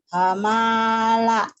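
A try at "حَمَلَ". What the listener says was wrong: salah, pendek semua,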